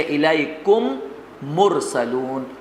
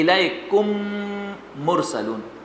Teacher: جیسے الیکم مرسلون، تو الیکم میں بھی میم، مرسلون میں بھی میم. تو الیکم میں جو میم ہے یہ نہیں پڑھیں گے، بس کہ اس میم کو مرسلون کے میم میں مدغم کر دیں گے. تو اس کا نام ہے ادغام شفوی.